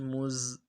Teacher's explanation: زا زور دیے پڑھیں گے، زا کی سیٹی نکلے گی